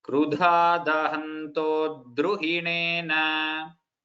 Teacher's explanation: that little stress on dakara should be there because dru is samyukta akshara.